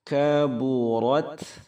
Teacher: Ada hamznya, ada desisnya pada huruf ta yang sukun. Ta ta'nits namanya.